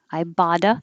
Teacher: we talked about i bought a new book i bada because the t will change to a d and it will connect